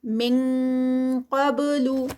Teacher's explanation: اخفا میں ہم اس کے مخرج پر ہی چلے جاتے ہیں، جیسے من قبل نہیں ہوگا بلکہ من ING کی ساؤنڈ آئے گی